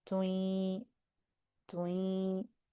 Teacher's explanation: start with the tu sound and go into the ya, tui, but in the nose, tui. Tui. There's a u sound, tu.